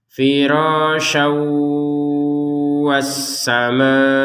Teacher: tanwin masuk kepada huruf wau disertai dengungan. Jangan lupa dengung.